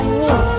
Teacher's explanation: Cara mengucapkannya dengan menyentuhkan bibir atas dan bawah sambil mengalirkan suara dari rongga hidung. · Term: Suara hidung